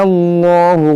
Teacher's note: इसमें जलालत को मोटा पढ़ेंगे, क्योंकि यहाँ पर ज़बर है